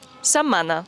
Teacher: És el cas de la paraula setmana, en què la T no es pronuncia i la M sona doble. Setmana.